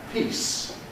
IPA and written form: piːs (piece)